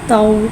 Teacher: और वावलीन को होठों की गुलाई के साथ अदा करके पढ़ेंगे। तो वाव ज़बर तौ, तो को एक अलिफ यानी 2 हरकत के बराबर खींच के पढ़ेंगे।